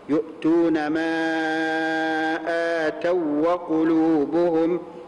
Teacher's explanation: لابد من ادغام الواو الساكنه في الواو المتحركه تصير هكذا يؤتون يؤتون يؤتون ما اتوا وقلوبهم يبقى ادغم الواو · لا بد من إدغام الواو الساكنة في الواو المتحركة